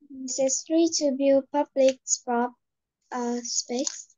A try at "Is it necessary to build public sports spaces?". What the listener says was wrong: Is it necessary to build public sports spaces? I want to hear the S's. Is it necessary to build public sports spaces?